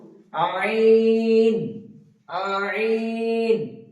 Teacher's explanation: কণ্ঠনালী একদম উপরিভাগের সঙ্গে, উপরিভাগ বা মাঝখানের সঙ্গে আইনটা উচ্চারিত হবে